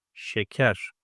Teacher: My mouth doesn't take a round shape. It is unrounded. Front, unrounded.